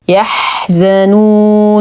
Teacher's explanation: همسه والرخاوه وبقيه الصفات نتم ضمه النون الاولى بعدها حرف مد نقف على النون الثانيه بسكون عارض وقبلها حرف مد فالمدار للسكون يمد بمقدار اثنين اربعه ست حركات وقفا